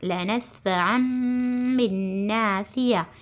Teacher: نون کی آواز نہیں آنا، نون کو نکال دے کر میم میں بدل دینا · اخلاب ہے۔ تنوین کے بعد با آ کر ہے تو نون کو میم سے بدل کر گنہ اور اخفا کے ساتھ پڑھنا